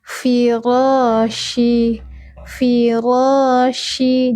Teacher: Fi, ujung gigi seri atas menyentuh perut bibir bawah.